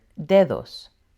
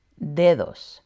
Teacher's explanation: La letra D is stronger at the beginning of a word, but it's softer in the middle of the word, sounding more like a TH in the or them.